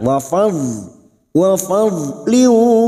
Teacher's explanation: Huruf dhad yang memiliki sifat istitala, tepi lidah nempel pada gigi geraham atas, boleh kiri boleh kanan.